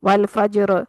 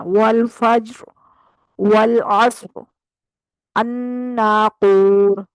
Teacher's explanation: یہ بھی خیال کرنا ہے کہ را پہ کلکلا نہ ہو جائے